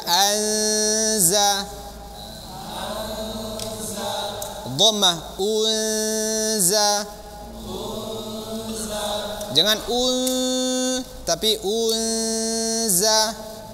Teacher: ujung lidah dengan gigi seri bagian bawah dan juga lidahnya tersentuh kan ke gusi atas ya gusi depan bagian atas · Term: huruf z